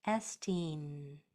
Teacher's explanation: the word ends with your tongue still at the top of your mouth.